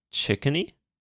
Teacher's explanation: you put stress on the first syllable